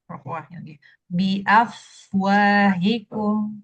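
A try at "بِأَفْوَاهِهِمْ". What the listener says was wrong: Tapi jangan dijeda ya biafwahikum.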